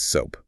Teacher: It requires a distinct, rounded, long O sound.